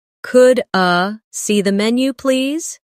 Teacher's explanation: In fast speech, could I sounds like could a.